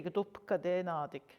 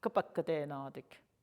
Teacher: But so often fluent speakers will, instead of doing the do business or gado, they'll still have the G for you, but then they just change the verb slightly, shift the accent, and doing that is enough to indicate present tense.